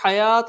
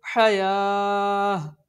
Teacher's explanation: یہ والا تا ہمیشہ وقف کی صورت میں ہاں ساکن میں تبدیل ہو جاتا ہے۔ علی حیاہ، اس کو حیات نہیں پڑھیں گے، اس کو حیاہ۔